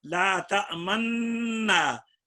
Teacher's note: جب ادغام کرو گے تو نون کے ضمے میں ہونٹ گول کرنے ہیں